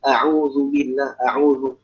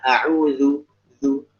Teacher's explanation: Jadi kita lebih tipiskan dhammah pada huruf dal.